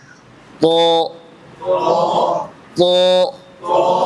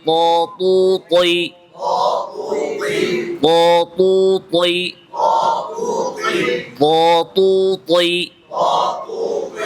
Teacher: ত, ত, জবরে মুখ খুলতে হবে। ত, তু, তই, বাতাস যেন ভুলেও না বের হয়। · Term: ত হরফটি